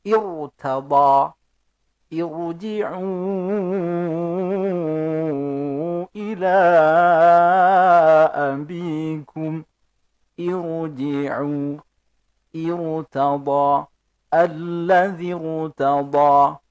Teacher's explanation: Ra sukun meskipun huruf sebelum ra sukun itu harokat kasrah, tetapi di situ ada hamzah wasal sebelum ra sukun. Maka ra sukun harus tetap dibaca tebal atau dibaca tafkhim.